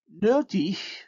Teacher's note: And so the same thing happens with the word mot, that's plus back, plus round, and nötig, which becomes plus round, minus back, because the suffix vowel is minus back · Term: umlaut